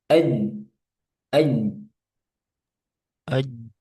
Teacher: Jadi kenapa dia kok bisa macet seperti itu? bisa kuat, bisa tertahan suaranya. Karena makhrajnya di tengah lidah itu itu rapat. Jadi dirapatkan sehingga nanti enggak ada timbul celah, enggak ada celah. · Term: sifat syiddah